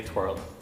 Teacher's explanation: It's the e r sound that's quite different. >> Ireland definitely has the harder or sound. >> You actually say the R.